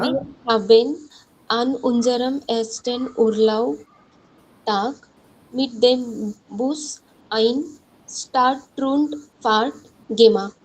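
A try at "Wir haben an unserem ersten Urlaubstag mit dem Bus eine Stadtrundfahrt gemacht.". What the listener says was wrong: Well done. Sehr gut.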